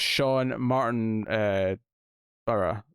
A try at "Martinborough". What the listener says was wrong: Martinborough? It's because there's no extra O between the B and the R. So it's just Martinborough.